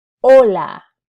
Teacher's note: the letter H has no sound whatsoever